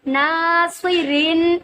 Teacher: رو باریک کریں گے. کیوں؟ کیونکہ رو کے نیچے کی حرکت ہے